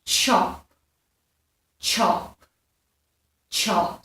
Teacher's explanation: a ch sound, and this is made of 2 sounds, so it's a t and a ch. Okay, so you're using chop, chop, chop, so it's a t and a ch, chop.